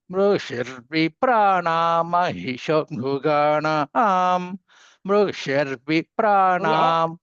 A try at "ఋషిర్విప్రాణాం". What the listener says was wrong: మీరు పైకి అంటున్నారండి. ఋషిర్విప్రాణాం